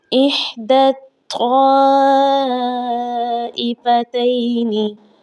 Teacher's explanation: یا بھی نہیں پڑھی جائے گی، الف بھی نہیں پڑھی جائے گی اور لام کو بھی نہیں پڑھا جائے گا۔ دال کو ہم نے ڈائریکٹ طا کے ساتھ ملانا ہے، کیونکہ طا تشدید والا لفظ ہے اور یہ تشدید حقیقی تشدید ہے، لہٰذا ہم نے ان الفاظ کو چھوڑ دینا ہے جن کے اوپر کسی بھی قسم کی حرکت نہیں آئی۔